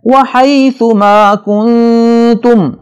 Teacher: نون کے بعد تا آ رہا ہے، یہاں پہ غنہ ہوگا